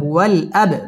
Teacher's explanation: বা কলকলার হরফ ধাক্কা দিয়ে পড়তে হবে